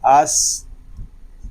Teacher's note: اس میں سین میں سیٹی کی آواز آئے گی اس کو آس نہیں پڑھیں گے اس پڑھیں گے.